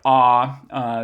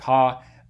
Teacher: this is a low back vowel because the whole tongue is lower and it's still back even probably backer than right at least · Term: low vowel